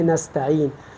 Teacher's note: اس یائے مدہ کا مخرج جوف دہن ہے، یعنی منہ کا جو اندر کا خلا ہے